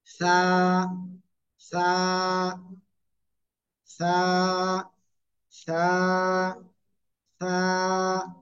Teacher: জিব্বার আগা, উপরে 2 দাঁতের আগায় লাগাবো, লাগিয়ে হালকা বাতাস বের করে নরম করে একালিফ টেনে উচ্চারণ করব।